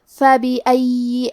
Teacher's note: کلمت فَبِأَيِّ کے آخری میں یا پہ تشدید ہے تو ہم 2 حرف کے برابر یا کو پڑھیں گے، اور کیونکہ تشدید زیر کا ہے تو ہمیں زیر کو ظاہر کرنا ہے.